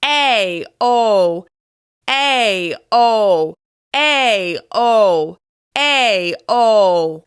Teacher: When you say the O sound, your jaw is dropping and your mouth is rounding. Think of the shape a fish makes when it opens its mouth up and down.